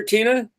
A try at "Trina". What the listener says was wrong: It's Trina. It's Trina, by the way, not Tina.